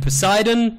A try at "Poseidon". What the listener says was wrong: Dude, sorry, I don't want to be embarrassing, but the P is silent, so... It's like pterodactyl.